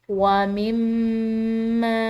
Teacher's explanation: میم مشدد ہے اس پر ہم غنہ کریں گے، اور ساتھ میں اس کے اوپر جو یہ چھوٹی مد آ رہی ہے اس کی وجہ سے ہم اس کو لمبا ادا کریں گے۔